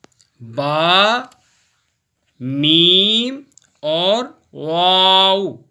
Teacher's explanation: ये तीनों हुरूफ हम मखरज हैं, होंठों से पढ़े जाते हैं। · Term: हुरूफ शफ़वी